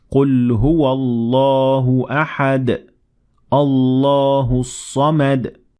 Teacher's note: اب یہاں ہم نے اللہ کے لام کو مکمل طور پر موٹا ادا کیا ہے کیونکہ ہم نے احد پر وقف کر دیا تھا